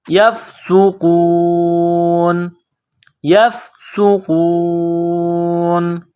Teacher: یفسوقو، نون زبر نہ، یفسوقون، جب یہاں پر وقف کریں گے، سٹاپ کریں گے تو نون کو سائلنٹ کریں گے